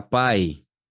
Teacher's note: Pai também é outro decrescente, só que agora decrescente oral.